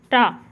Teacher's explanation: ये टा जो है हमारा तो ये मूर्धन्य से बोला जाने वाला वर्ण है